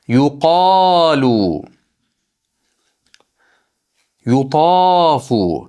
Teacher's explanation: Yuqolu qofdan keyin mad mana alif bor. Oldi fathalik kelyapti. Ikki harakat miqdori cho'zamiz.